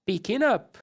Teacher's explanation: a próxima palavra começa com som de a up então eu posso juntar essas duas palavras num som só